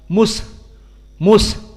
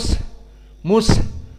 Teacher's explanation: Mus dikeluarkan haknya nafasnya jadi tidak ditelan Mus Mus ditelan tapi dikeluarkan Mus Mus dan juga sinnya karena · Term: hams